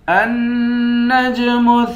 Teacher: حمزے کو نون سے ملا کر نون پر غنہ کریں گے، نون کے بعد جیم ہے، جیم حروف قلقلہ ہے، یہاں پر قلقلہ کریں گے۔